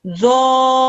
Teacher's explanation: we're going to stretch the dha, and then at the end of the dha, we're going to add in a r sound into it